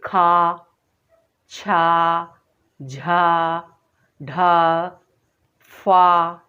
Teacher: जिन वर्णों के उच्चारण में मुख से अधिक हवा निकलती है उन्हें हम क्या कहते हैं, महाप्राण व्यंजन कहते हैं